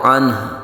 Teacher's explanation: عنہ کو ہم نے ہا پیش کو ہا ساکن میں بدل دیا